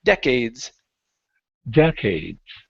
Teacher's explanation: okay, the stress is at the very beginning.